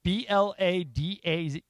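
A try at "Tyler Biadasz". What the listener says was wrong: I think that's an I. Biadas?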